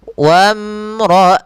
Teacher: alifnya tidak dianggap karena di sini kita namakan dengan hamzah wasal langsung ke mim.